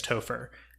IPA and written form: ˈtou.fəɹ (Topher)